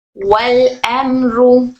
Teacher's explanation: मीम साकिन के बाद रो आया, इजहार शफवी, मीम में गुन्ना नहीं करेंगे